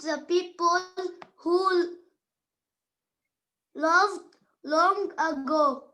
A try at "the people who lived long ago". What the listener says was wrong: So this one is lived, not loved. Cross the O and put I, all of you. Lived long ago. So we study history to learn about the people who lived long ago, not loved, lived.